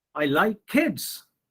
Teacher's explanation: So I'm giving stress on kids. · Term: emphasis